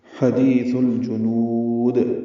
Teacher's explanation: حدیث یہ سل نہیں پڑھنا، سین نہیں ہے، لام ساکن پہ اظہار ہے، جیم اور نون دونوں پر حرکت ضمہ ہیں یعنی پیش ہیں۔ جیم کو جلدی پڑھنا ہے، نون کو لمبا کرنا ہے، اور دال ساکن پہ قلقلہ ہے، وہ مدہ کے بعد دال ساکن آئی ہے تو مدہ عارض للسکون بنی ہے۔